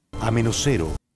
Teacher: Las dos S se han convertido en una sola.